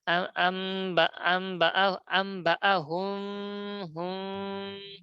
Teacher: আম আম বা আম বা আম বা হুম হুম, উপরে দাঁত নিচে ঠোঁটে, দুই ঠোঁটে একটু ফাঁকা বিড়বিড় করে আওয়াজ বের হবে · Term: ইখফা শাফাবি